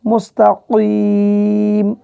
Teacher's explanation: এখানে কফ জিহ্বার গোড়া থেকে মোটাভাবে উচ্চারণ করবেন